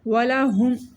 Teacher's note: ہا حروف حلقی ہے گلے کے آخری حصے سینے والی سائڈ سے پڑھا جائے گا